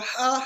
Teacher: جبکہ یہ ہا ہے یہ حلوے والی ہا اس کو ہم کہہ سکتے ہیں. تو یہ ہا ٹھنڈے سانس کے ساتھ اس کو ہم ادا کریں گے